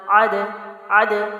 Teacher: حروف قلقلہ کو جب آپ پڑھتے ہیں تو اس کے مخرج میں یعنی دال کی جہاں سے ادائیگی ہے اس جگہ پہ باؤنسنگ کی جاتی ہے، حرکت پیدا کی جاتی ہے، جنبش کی جاتی ہے۔